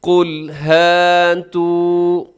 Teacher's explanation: قل میں قاف موٹا رکھیے گا، اسے باریک نہ ہونے دیجیے گا